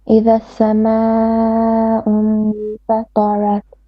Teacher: Now, the sama'un here, mad al muttasil, 4 or 5 beats, so make it a bit longer.